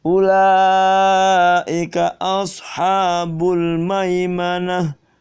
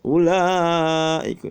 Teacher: Mat wajibnya jangan lupa ula panjang 5 harokat